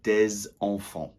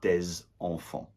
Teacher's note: I made the liaison there between the S and the E of enfants because it starts with a vowel